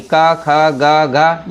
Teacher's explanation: क वर्ग वाली क, ख, ग, घ ये ये जितने भी वर्ण हैं सभी के सभी कंठ आते हैं।